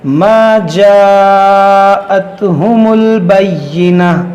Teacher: حرف مدہ کے بعد حمزہ ہے تو یہاں پر مد متصل ہوگا